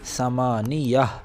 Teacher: اس لیے کہ گول تا پر وقف ہو رہا ہے، لہٰذا یہ گول تا ہا سے بدل جائے گی اور حرف ساکن کی طرح پڑھی جائے گی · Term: وقف بالابدال